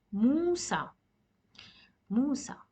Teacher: we don't prolong the sound at the end we stop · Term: alif makhsura